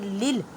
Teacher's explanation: دال پیش دو الحمد لام لام زیر لل لام پہ مضبوطی کریں، لام کو 2 مرتبہ پڑھیں کیونکہ لام مشدد ہے